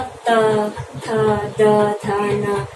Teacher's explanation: त वर्ग का उच्चारण स्थान दंत्य। जब हमारी जीवा दांत को स्पर्श करते हुए वायु को बाहर निकालती है तो त वर्ग का उच्चारण होता है।